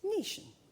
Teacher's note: someone really posh like the late queen, pronounced family as 'femily' and nation as 'netion'. The a is moved to an e in pronunciation